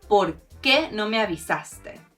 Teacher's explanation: The accent does mean you emphasize the qué and you separate the words